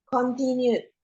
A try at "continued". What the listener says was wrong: Jangan dibaca O, baca continued.